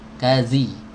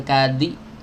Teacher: Ka tadi sama ya, huruf zal ya. Zal keluar dari ujung lidah bertemu dengan ujung gigi seri atas, digesek sedikit. The bukan tok ditempelkan dong habis itu dilepas.